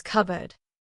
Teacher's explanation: If we said it slowly, it would be cupboard. But in natural speech, the P disappears. It just becomes cupboard. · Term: elision